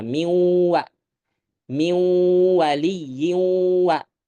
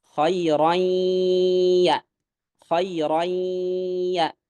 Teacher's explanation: ketika pengucapan waw dan ya udah nggak ada lagi gunnah